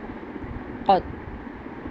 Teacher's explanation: تا کو بالکل بھی قلقلہ نہیں کرنا اس لیے آرام سے اس کو قط، بس یہاں پہ فنش کر دینا۔